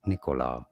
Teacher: not a very strong stress on it but it's certainly not on the second syllable not on the co syllable